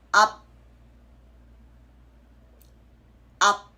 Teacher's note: It's up, and you're keeping your mouth closed to not let that escaping sound. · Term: supporting consonant